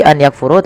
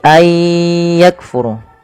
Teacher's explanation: Memasukkan bunyi nun kepada huruf setelahnya kemudian disertai dengan ghunah. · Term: idgham bighunah, idgham bi gunnah